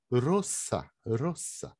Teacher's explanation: se falar ro, como no português, um esperantista leria roça, roça. Esse S não transforma em Z.